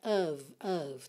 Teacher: pintei esse f de of aí pra você lembrar que ele vai ter som de v, tá? E o o também não é o, né?